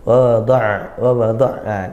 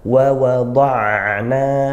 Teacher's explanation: seperti itu sifatnya kemudian waadana hati-hati di sini ada dua Wau Wau itu makhrajnya dari dua bibir ya jadi syafatain dari dua bibir Jangan sampai kita ngdak menggerakkan bibir di kedua ww ini Wa